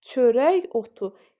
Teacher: yazılışda k-dır tələffüzdə y-dır